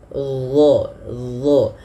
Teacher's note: Kemudian pada lafal dha, huruf dha ini dia makhrajnya sama dengan huruf dzal, akan tetapi yang membedakan adalah huruf dha ini harus ditebalkan. Dha, pangkal lidah kita naik karena ada salah satu sifatnya huruf isti'la.